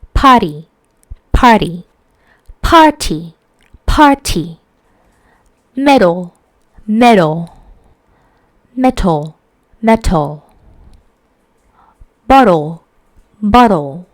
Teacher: in American English, the T is sometimes pronounced with a brief voice tap against the alveolar ridge. So somehow it sounds similarly like a D sound. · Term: T voicing